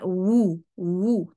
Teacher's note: होंठों को राउंड करते हैं तो ऑटोमेटेकली जुबान पीछे से भी उठ जाती है